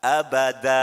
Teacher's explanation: ketika wakof namanya mad iwad ya, tanwinnya dihilangkan tapi menjadi a, dibaca a biasa.